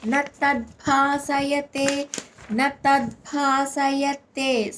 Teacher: అక్కడ భ అనేది మహాప్రాణక్షరం